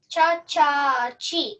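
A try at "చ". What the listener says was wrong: No. Just plain one. Don't give any stress on it. Cha, cha, cha, cha, chi. Don't give any stress for that letter.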